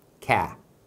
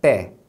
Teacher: Aí se você observar a abertura da boca, a gente fala pé. Esse som de cap é mais aberto.